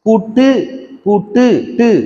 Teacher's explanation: வல்லின மெய்யின் மேல் ஊர்ந்து வரும் உகரம், அதாவது கு, சு, டு, து, பு, ரு ஒரு சொல்லின் இறுதியில் வரும்போது தனக்குரிய ஒரு மாத்திரை அளவில் இருந்து குறைந்து அரை மாத்திரை அளவினதாய் ஒலிக்கும். இவ்வாறு குறைந்து ஒலிக்கிற உகரம் குற்றியலுகரம் அப்படின்னு சொல்றாங்க.